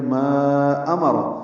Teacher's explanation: حمزہ بالجہر ادا کریں گے